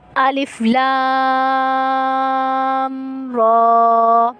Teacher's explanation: لام کو ہم 5 الف کی مقدار کھینچ کر پڑھیں گے کیونکہ اس پہ بڑی مد ہے، اور را کو ہم 1 الف کی مقدار کھینچ کر پڑھیں گے کیونکہ را پہ کھڑا زبر ہے، ٹھیک ہے۔